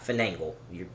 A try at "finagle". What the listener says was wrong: You put an extra N in there?